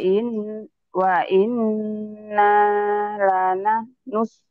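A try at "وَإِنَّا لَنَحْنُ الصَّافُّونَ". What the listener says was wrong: panjang? Kan ada mad tuh.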